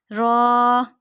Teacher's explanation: را کو بھی ہم پر کر کے پڑھیں گے، را. را کا مخرج زبان کا کنارہ اور دانتوں کے اوپر کے تالو کی جانب والے حصے سے، دوبارہ ریپیٹ کیجئے، زبان کا کنارہ اور دانتوں کی جڑ کے اوپر تالو کی جانب والے حصے سے ادا ہوتے ہیں یہ، را.